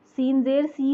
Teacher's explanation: मजहूल क्या होता है कि सीन को ज़ेर को जो है वो ई के बजाय ए की तरफ साउंड करना